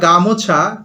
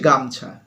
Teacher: ওকারটা লুপ্ত হয়ে গেল, গামোছা হয়ে গেল গামছা। তাহলে এখানে গামোছা, মাঝখানে যে ম আছে সেখানে একটা শ্বাসাঘাত পড়ছে, তার প্রভাবে কি হচ্ছে, ও স্বরধ্বনিটা লুপ্ত হয়ে যাচ্ছে, হচ্ছে গামছা। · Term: শ্বাসাঘাতের প্রভাব